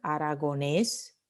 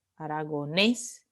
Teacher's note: la última sílaba es tónica